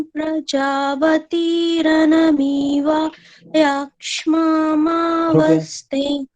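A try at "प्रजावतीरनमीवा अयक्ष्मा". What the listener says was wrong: यहाँ पर जो अ है वो स्पष्ट नहीं आया आपका। रनमीवा अयक्ष्मा ऐसे बोलेंगे। रनमीवा अयक्ष्मामा ऐसे बोले।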